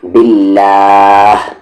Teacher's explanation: یہ اللہ کا لام لائٹ ہوگا کیونکہ اس سے پہلے زیر ہے